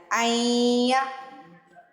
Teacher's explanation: غنہ کرنا ہے، ناک میں آواز لے کے جانی ہے